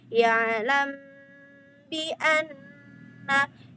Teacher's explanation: Ada mim sukun ketemu sama huruf ba. Mim sukun ketemu sama huruf ba. Jadi kita tahan di sini dua harakat ya teman-teman. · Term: ikhfa syafawi